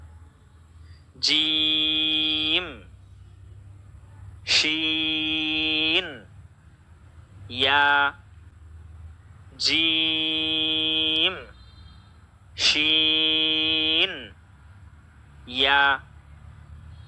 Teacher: 6 নম্বর মাখরাজ, জিহ্বার মধ্যখান তার বরাবর উপরে তালুর সঙ্গে লাগিয়ে 3টি হরফ উচ্চারিত হবে